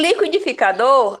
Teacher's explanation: Em liquidificador, a sílaba mais forte é a última, tá certo? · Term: sílaba tônica